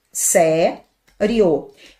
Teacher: Quando você deixa o final junto, o acento, ele está na penúltima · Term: paroxítona